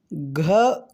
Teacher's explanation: घ का उच्चारण स्थान कंठ है।